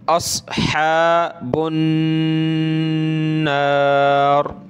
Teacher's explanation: نون پر یہ تشدید ہے اس لیے غنہ کریں گے